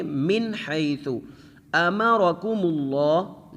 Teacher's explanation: لفظ اللہ کا نام موٹا کر کے پڑھا جائے گا کیونکہ پیچھے والے حرف کے اوپر پیش ہے